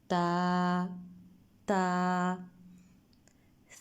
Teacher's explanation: تا کو ادا کرتے ہوئے ہم زبان کو اوپر والے دانتوں کی جڑ کے ساتھ لگائیں گے